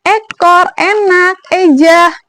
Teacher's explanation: E yang posisi lidahnya itu madya atas, menggunakan lidah bagian depan, posisi mulutnya masih semi tertutup.